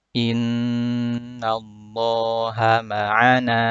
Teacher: Di sini ada huruf nun bertasydid berwarna merah untuk memudahkan. Cara bacanya dipanjangkan dulu, didengungkan.